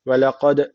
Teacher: D harfi cezim almış. Burada kalkale var. Hafif bir vurguluyoruz bu D''yi.